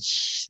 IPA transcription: ʃ